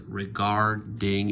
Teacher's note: Re, which of course is the grammatical part. Guard, that's the root part, that's where the strength is. Regarding and ing, that's like ly, that's a li, that's a grammatical part.